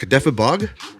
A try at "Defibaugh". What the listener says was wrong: Nope, no G. silent. Defibaugh.